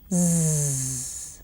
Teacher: vibration of the vocal cords involved, and hence you would hear Z, which is like the buzzing of a bee. Just remember, do not bring your tongue between your teeth like you do for the and the.